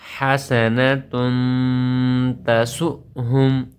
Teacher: تنوین کے بعد حروف اخفاء میں سے تا آئی ہوئی ہے. یہاں پر اخفاء کا قاعدہ لگے گا، ہم آواز کو ناک میں چھپا کر پڑھیں گے اور ایک الف کے برابر لمبا کریں گے.